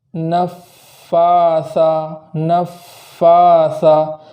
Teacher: الف کے برابر وہاں تاخیر اور کرنا ہے، جیسے نفاثا، نفاثا، تشدید کی الگ تاخیر کرنا ہے اور کھڑا زبر کی الگ تاخیر کرنا ہے